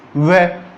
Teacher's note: दंतोष्ठ हो जाता है। वह, जब वह बोलते हैं तब अपनी जबान नीचे वाले दांतों पर स्पर्श करती है और अपने होठ क्या हो जाते हैं? गोल हो जाते हैं।